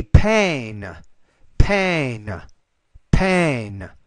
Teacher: the actual a you have to make that a little longer